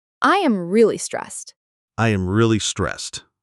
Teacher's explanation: When we use really, we usually put a lot of stress on that word to show how strong the feeling is.